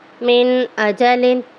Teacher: اظہار ہے اس میں کیونکہ حمزہ ہے، یہاں پہ غنہ نہیں ہوگا، نون جو ہے ظاہر کر کے پڑھا جائے گا۔ میم نون زیر من، ہا الف زبر ہا، من ہا، دال 2 زیر دن، من ہا دن، ٹھیک ہے۔